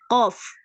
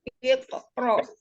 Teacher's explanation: Qaf itu adanya di pangkal lidah, yang pangkal lidah di bagian atas ya, ketemu dengan langit yang lembek. Jadi semakin ke belakang semakin ke atas.